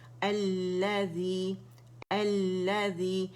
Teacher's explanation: اس کے بعد ہمارے پاس شمسی لیٹر آئے تو لام تعریف لام شمسی میں مرج ہو گیا. ٹھیک ہے, اب یہ مشدد ہو گیا تو ہم نے کیا, اکیلا جب اسے پڑھیں گے حمزۃ الوصل پہ ہم نے فتحہ ڈال دینی. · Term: لام شمسیہ